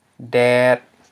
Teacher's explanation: it ends in a dead syllable, so therefore it's a low tone. And I transcribed it with the low tone symbol, low tone marker. · You have the mid consonant d followed by a long vowel eh. And notice this consonant is just a default consonant.